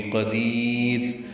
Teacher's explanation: قدیر میں قاف پر ہے، دی یا مدہ ہے، یا باریک پڑھیں گے، اور اگر وقف کرنا ہے تو را بھی باریک ہوگی